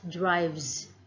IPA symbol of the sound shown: z